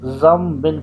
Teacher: نون ساکن کے بعد با آ جائے تو وہ نون ساکن میم میں کنورٹ ہو جائے گا ، تو یہاں اقلاب کا قانون لگے گا، تو زم بن